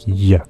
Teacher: make a post alveolar sound like tion and then eventually you'll get to your palate the roof of your mouth that produces a palatal sound